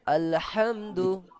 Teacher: জজমের জন্য >> আলহামদু >> এটা এটাও জজমের জন্য টানলো দু দাল পেশ দু শুধুমাত্র হারাকাত আছে সেই কারণে শুধু একার মধ্যে উচ্চারণ হবে এবং তাড়াতাড়ি